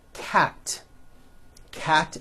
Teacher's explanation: cat ends with an unvoiced T